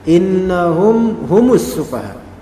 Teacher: Mim mati bertemu dengan ha, hum, ya. Maka dia menjadi izhar syafawi, mimnya jelas.